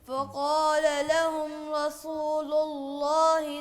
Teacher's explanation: رسول را کو پر پڑھیں اور سین کو باریک